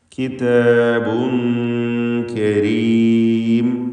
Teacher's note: കിതാബുൻ എന്നതിൽ തൻവീനും ശേഷം കാഫുമാണ്. ഇഖ്ഫാ ഹഖീഖി നൽകി മറച്ച് മണിക്കുക. മണിക്കലിൽ തർക്കീഖാണ് വേണ്ടത്, കാരണം കാഫ് ഇസ്തിഫാലിൻ്റെ അക്ഷരമാണ് എന്നതുകൊണ്ട്.